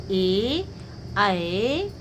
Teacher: ए और ऐ का उच्चारण स्थान क्या है? कंठ और तालु है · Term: कंठ तालु